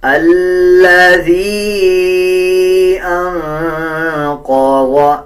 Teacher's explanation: چھوٹے مد کا مطلب ہوتا ہے جب کسی الفاظ کے اوپر چھوٹا مد آ جائے اس مد کو 3 سیکنڈ لمبا کر کے پڑھا جائے گا۔ اب جیسے یا کے اوپر چھوٹا مد ہے تو اس کو 3 سیکنڈ لمبا کریں گے